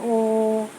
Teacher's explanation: ओ यानी ये गले से यानी कंठ से आवाज़ आ रही है, लेकिन इसमें होंठ भी देखिए हमारा ऊपर की ओर जा रहा है